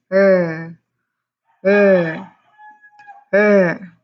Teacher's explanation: Your tongue is curled slightly and it does not touch the roof of your mouth at all. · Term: r sound